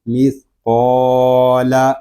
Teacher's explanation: لام باریک ہے اس کو ہم باریک ہی پڑھیں گے، صرف قاف کو پر کریں گے